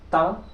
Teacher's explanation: जीवा कहीं ना कहीं ऊपर के दांतों में टच हो रही है अगर आप स्पष्ट रूप से उच्चारित करेंगे तो पाएंगे कि इन